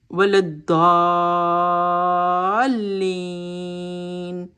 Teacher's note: اوپر لے کر جانا ہے، اور دعات کی ساؤنڈ کو اور لام کے ساتھ جو ہے اسٹرانگلی جوائن کرنا ہے، اس کو ایک اسٹریس کے ساتھ جوائن کرنا ہے، جس کو نبر کہتے ہیں